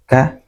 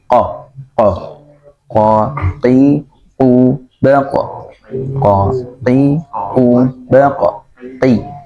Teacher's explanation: Kalau kaf tipis ya, ka ya. Kalau ko lebih dalam ya, pengucapannya ke tenggorokan yang lebih dalam. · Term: huruf qaf